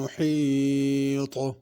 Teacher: محیط حا بڑی ہے، طا بھی صحیح ادا کرنا، تا نہیں پڑھنی